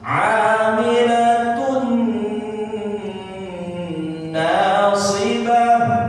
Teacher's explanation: doma tanwin bertemu nun, masuk ke huruf nun. Cara bunyinya amilatun nasibah. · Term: idgham bi gunnah